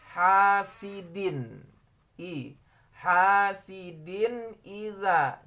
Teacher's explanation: Setelah tanwin ada hamzah di depan maka dia dibaca izhar. Hasidin hasidin idza, jadi dinnya itu dijelaskan ya membacanya ya.